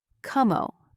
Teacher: One word, rising tone. It means say that again